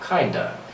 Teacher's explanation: So instead of saying kind of, we replace it with the letter A and we give it a schwa sound